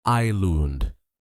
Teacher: Many learners say is land, but the s is silent. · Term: silent letter